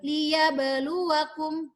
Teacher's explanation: Ingat di situ ada qalqalah harus mantul.